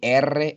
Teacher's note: we say erre and it vibrates in your mouth